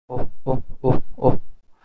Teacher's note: between these two oh, oh, the glottal stop, sorry, the vocal folds are totally closed, and at that time the sound which is pronounced, it is actually a glottal stop.